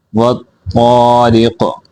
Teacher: را یہاں باریک ہوگی کیونکہ را کے نیچے کسرہ ہے